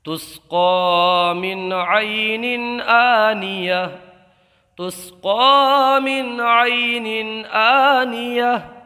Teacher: یا لین کا قاعدہ ہوگا، بغیر کھینچے پڑھیں گے۔ ہم میم ساکن میں اظہار شفوی ہوگا، گنہ نہیں کریں گے، اس لیے کہ میم ساکن کے بعد حرف واو اور میم کے علاوہ کوئی بھی حرف آ جائے تو اظہار شفوی کا قاعدہ ہوتا ہے، وہاں گنہ نہیں کرتے ہیں۔ · نون کے نیچے جو دو زیر کی تنوین ہے اس میں اظہار کا قاعدہ ہوگا، اس لیے کہ تنوین کے بعد حمزہ آیا ہے، اور حمزہ کو ایک الف کھینچ کر کے پڑھیں گے۔